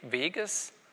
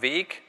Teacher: Wenn Sie dann den Nominativ haben, Weg, steht das G am Silbenauslaut und da greift dann die Neutralisierung in Form der Endranddesonorisierung. Das heißt, Sie können diese Form hier ableiten, wenn Sie im Lexikon das Ganze mit G notieren oder in Ihrem Kopf mit G abspeichern.